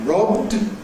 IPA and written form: rɒbd (robbed)